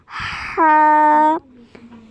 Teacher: हलक के दरमियानी हिस्से से हा अदा होता है। ये देखिए हम इसके हलक के भी हिस्से पढ़ चुके हैं, वस्ते हलक से अदा हो रहा है, ठीक है।